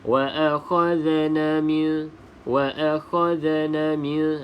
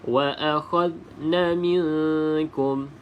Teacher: huruf za ni bukan qalqalah, maka tidak boleh kita lantunkan